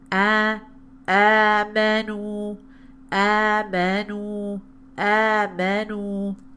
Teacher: with only the nasalization being on the mim and the noon, it'll sound like this.